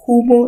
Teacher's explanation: la aspiración de la inicial H